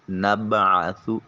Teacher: عین کو وسط حلق سے ادا کریں گے۔